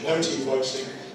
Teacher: British English, no ‘T-voicing’ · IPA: ˈwɒt ə ju ∖_weɪt_ɪŋ fɔː